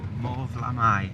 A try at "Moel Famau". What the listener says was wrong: No, there's no L. I'm saying Famau.